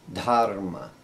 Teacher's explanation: this is an aspirated da sound